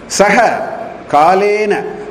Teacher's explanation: That visarga has gone lopa in sandhi. If you do a vicheda, visarga will come back.